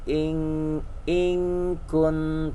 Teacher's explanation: nun mati atau tanwin ketemu kaf dan kop, engnya banget. Tapi kalau yang nggak ketemu kaf dan kop mah nggak eng banget. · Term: ikhfa